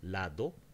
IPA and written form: lado (lado)